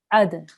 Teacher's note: slight jerk on the dal there